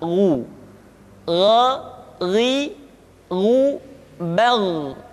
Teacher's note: huruf gho diucapkan seperti kita mengucapkan huruf Kha yaitu diucapkan dari pangkal tenggorokan kita